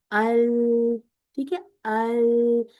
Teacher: मखरज लाम हमने किया था कि अदना हाफा से जुबान मुंतहा की तरफ यानी कि आगे की तरफ इन्हिराफ करती आती है